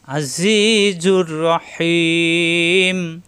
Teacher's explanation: আজিজুর রহিম, এখানে আসছে তানবিন, এই 2 পেশের 1 পেশ এসে রর সাথে মিলবে, গুণ্য হবে না। তানবিনের পরে র আসছে, তাজদিদ ধরে মিলাতে হবে গুণ্য ছাড়া, ঈদগামে বেলা গুণ্য।